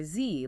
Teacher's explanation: Feel that buzzing. That's because your vocal cords are vibrating. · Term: voiced